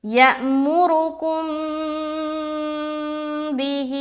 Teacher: ہاں یہاں پر کیا تھا ہم لوگوں نے آتیناکم، یہاں میم ساکن تھا، میم ساکن کے بعد تو یہاں بھی اخفائے شفوی کیا تھا، اور یہاں پر بھی میم ساکن کے بعد با ہے، یہاں پر دیکھیں تو یہاں پر بھی اخفائے شفوی ہوگا. یعنی کہ میم ساکن کے بعد با آ جائے تو غنہ کے ساتھ کیا کرتے ہیں، اخفا کرتے ہیں، غنہ کے ساتھ اخفا